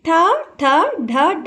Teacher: మన నాలుక ఏదైతే ఉంటుందో అది పైకి వెళ్లి అంటే మనం అంగిలు అంటాం కదా పైన మూర్ధన్యాన్ని దానికి తగులుతుంది అన్నమాట సో అక్కడ తగిలే అక్షరాలు పుట్టడం వల్ల దానిని ఏమంటామ అంటే మూర్ధన్యము అని